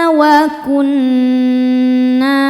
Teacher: Cara bacanya berdengung. Tahan dengungannya kurang lebih dua harakat. Wa kunna na hukumnya mad thobi'i zohiri.